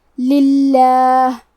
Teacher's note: کلمت للہ کے شروعات میں لام کے نیچے زیر ہے، لہذا ہم لفظ الجلالہ مطلب کلمت اللہ کے لام کو پتلی آواز میں پڑھیں گے، للہ۔ کلمت ذالکم میں آخری میں میم ساکن ہے تو ہم میم کو ظاہر کریں گے۔